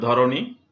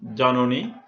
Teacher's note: মধ্য অ ও কারের মতো উচ্চারণ হয়েছে